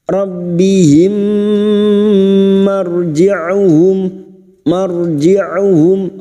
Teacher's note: Summa ila rabbihim masuk pada huruf ba rabbihim. Rabbihim mim sukun bertemu mim idgham mimi masuk pada huruf mim berikutnya disertai mendengung selama 3 harakat